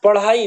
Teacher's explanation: पढ़ाई में उच्छिप्त ध्वनि का प्रयोग हुआ है। इसको द्विगुण व्यंजन भी कहते हैं।